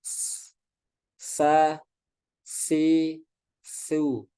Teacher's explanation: Yang pertama, shofir, yaitu tajamnya suara karena ia keluar dari celah yang sempit antara ujung lidah dengan dua gigi seri atas dan bawah. Ya, jadi poinnya di sini tajamnya suara. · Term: sofir